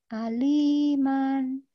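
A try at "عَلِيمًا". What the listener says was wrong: Mannya pendek, nggak boleh dipanjangin. Iya, aliman.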